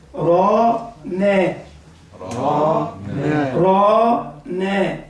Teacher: رانا الراء هنا مفخمة فتحة راء، بعدها ألف، يبقى الألف يبقى مفخم